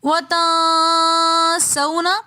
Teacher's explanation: وَتَنْسَوْنَ میں نون ساکن کے بعد اخفا کے 15 حروفوں میں سے سین آ رہا ہے تو اس لیے یہاں پر ہم نے وَتَنْسَوْنَ اخفا کر کے پڑھا۔